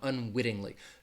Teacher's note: very soft D so if you hear me saying unwittingly it's you're not really gonna hear that T much it's going to sound like a light D sound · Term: flap T